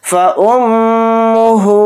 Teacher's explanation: मीम के ऊपर तशदीद है तो मीम में गुन्ना करेंगे, फिर हा को थोड़ा खींच कर पढ़ेंगे, हा के ऊपर उल्टा पेश है.